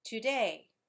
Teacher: has two syllables two where the first syllable is unstressed and the second syllable is stressed for example today when you say that word today you hear